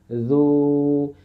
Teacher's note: পেশযুক্ত যে অক্ষর, যেমন জাল ওয়াও পেশ, তাহলে জাল পেশ জু, আর এই যে ওয়াও সাকিন আছে এই জন্য জু জু, এরকম দুইবার জু বলতে যে টাইম লাগে আমরা এক জুতে ওই টাইম দিব। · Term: ওয়াও মাদ